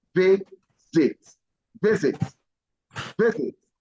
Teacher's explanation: the S is pronounced as Z